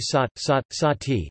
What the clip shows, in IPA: saːt